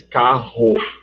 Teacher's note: A gente só aspira, quando a gente diz carro.